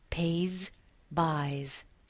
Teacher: U-Y is a vowel plus the Y. The S, the final S in these words is pronounced as a Z. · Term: final Z sound